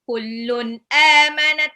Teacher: tanwin ketemu alif itu izhar